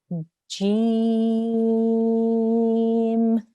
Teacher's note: the Jim, the way that you say the sound, is that the middle of your tongue touches the roof of your mouth. That means it touches the top of your mouth.